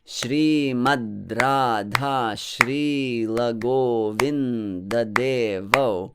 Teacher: each line starts with five heavy syllables